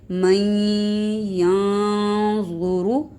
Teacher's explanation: ضا کو موٹا پڑھیں گے اور را کو بھی موٹا پڑھیں گے